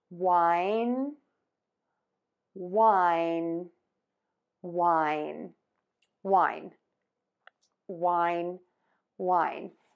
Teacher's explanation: Last, end with the N sound by touching the tip of your tongue to the back of your top front teeth. The air is going to move out of your nose. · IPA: /waɪn/